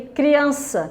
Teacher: Criança é uma palavra, paroxítona, que a sílaba tônica é a penúltima